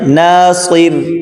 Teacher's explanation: صاد کو موٹا کریں، سیٹی کی آواز میں پڑھیں